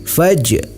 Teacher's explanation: Cara membacanya yaitu huruf jim dipantulkan. Faj, pantulkan sedikit ya. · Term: qalqalah sugra